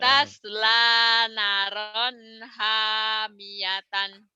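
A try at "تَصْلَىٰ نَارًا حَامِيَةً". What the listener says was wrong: Emang nanya pendek apa panjang ya? Bukan kepanjangan tadi mah pendek nanya. Tas lanaron gitu. Harusnya panjang kan itu mah.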